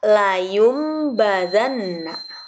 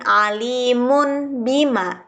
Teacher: Nun matinya diganti huruf mim saat bertemu dengan huruf ba. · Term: iqlab